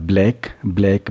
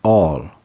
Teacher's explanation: جیسے بلیک میں فرنٹڈ ایل ہے اور لیٹرل ایل جیسے آل